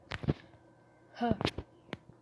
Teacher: The phoneme H has glottal articulation point, that is, it is produced in the glottis or anterior part of the larynx. It has a fricative articulation mode, that is, the air passage skimming for the narrowness led by the lower lip and the upper teeth.